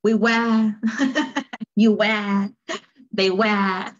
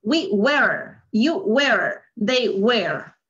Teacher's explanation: Algo por ahí no mencionan la R. Ellos prácticamente usan mucho este sonido que es la schwa. Por eso no suena la R.